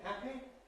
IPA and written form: ˈhæpi (happy)